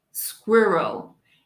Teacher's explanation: Nós vamos começar com squir, squir, squir. Nós estamos juntando o sk, o w, o r, tudo no mesmo sílabo.